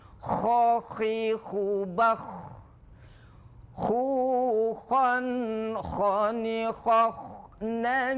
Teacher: Kho itu tempatnya di adnal halq di ujung ujung kerongkongan ko ya agak ngorok kayak orang tidur Kalau ngorok ko tidak